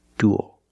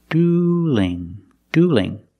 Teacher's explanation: Duel with a dark L and dueling with a light L, because the L is between vowels in the word dueling.